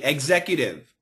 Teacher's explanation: We can change the T to a D.